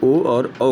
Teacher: कंठ ओष्ठ से जो है ओ और औ का उच्चारण करते हैं